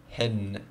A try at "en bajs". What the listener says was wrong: No, not hen. En. Enbajs.